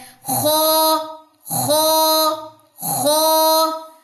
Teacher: خا بھی 2 حرفی ہے، خا کے اوپر ایک ڈاٹ ہے، یہ ہیوی لیٹر ہے. ہیوی لیٹر کی جو ساؤنڈ ہوتی ہے وہ منہ کے اندر ہی ٹریپ رہتی ہے، اقصی لسان آپ کی اوپر کی طرف اٹھتی ہے